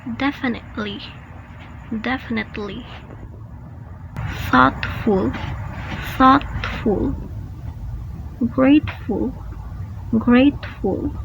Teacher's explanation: it is a tea that is not aspirated it is called stop tea because you have to stop releasing